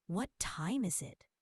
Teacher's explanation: Voice down at the end. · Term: Falling intonation